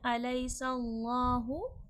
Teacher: अल्लाह लफ्ज़ से पहले ज़बर है, अल्लाह लफ्ज़ मोटा करके पढ़ा जाएगा। सीन हुर्फ़े सफ़ीर है, सख्ती सीठी के साथ पढ़ा जाएगा।